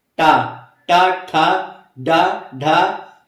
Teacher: टा वर्ग में जो है मूर्धन्य हो जा रहा है, मतलब जुबान को जो है हल्का टेढ़ा करना पड़ रहा है। ठीक है, पीछे की ओर ले जाना पड़ रहा है, तब बोलना पड़ रहा है। देखिए टा, टा, ठा, डा, ढा, मतलब जुबान को जो है पीछे, मतलब मूर्धन्य अवस्था में ले जाना पड़ रहा है।